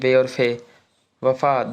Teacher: आठवां है आपका दंतोष्ठ्य। इन ध्वनियों का उच्चारण के समय जीभ दांतों को लगती है तथा होठ भी कुछ मुड़ते हैं